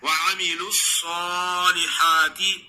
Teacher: صاد کو خوب موٹا ہی پڑھنا ہے